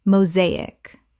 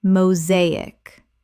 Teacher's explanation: 3 syllables with the stress on the second.